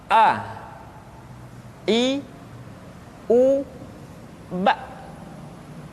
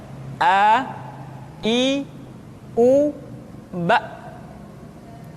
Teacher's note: Makhraj ketika mengucapkan huruf A berada pada tenggorokan yang terjauh.